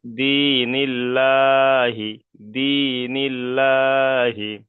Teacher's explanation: আর আল্লাহর লাম মশাদের পূর্বে যদি জের আসে তাহলে আল্লাহ শব্দটাকে বারিক করে পড়তে অর্থাৎ লা করে পড়তে হবে।